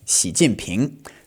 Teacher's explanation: Now, if we add the tones, it's going to be fourth tone then second tone, Jinping. And if we say the whole thing together, it's going to be second tone, fourth tone, second tone.